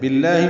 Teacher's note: باللہ میں لام اسم جلالہ با کی زیر کی وجہ سے باریک پڑھیں گے